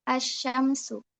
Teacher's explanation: Jadi alif lamnya itu ee terasa seperti hilang karena langsung masuk ke huruf setelahnya. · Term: alif lam syamsiyah